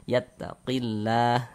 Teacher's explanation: maka lafaz Allahnya dibaca tipis, dibaca tarkik.